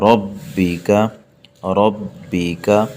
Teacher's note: کر کے پڑھیں گے سختی کے ساتھ، فصلی لی ربک، ربک، اس را کو موٹا پڑھیں گے کیونکہ را پر زبر ہے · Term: شد